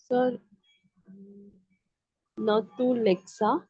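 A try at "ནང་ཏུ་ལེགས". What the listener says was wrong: अब देखिए इसमें आपने लेक्सा पढ़ा ना मैम, स is post पोस्टस्क्रिप्ट, so we don't have to pronounce this one.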